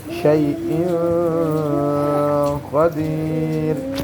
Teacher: قاف حرف حلقی میں سے نہیں ہے، یہاں غنہ ہوگا